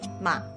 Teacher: technically goes down and then hooks up again like this but in reality most chinese speakers don't do the whole hooking up again thing at the end it takes too much time so most of the time third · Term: third tone